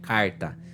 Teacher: Você já viu que eu tenho R retroflexo